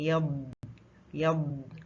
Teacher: اس پہ آپ نے آواز کو جھٹکے سے روکنا نہیں ہے، آواز تھوڑی سی جاری رہتی ہے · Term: ضاد